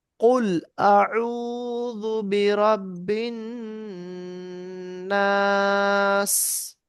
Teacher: এই নুনের ওপরে তাসদিদ এক আলিফ করে গুন্না পড়তে হয়। নুন এবং মিম এর ওপরে তাসদিদ হলে এক আলিফ গুন্না হয়, তো এখানে নুনের ওপরে তাসদিদ এক আলিফ গুন্না হবে।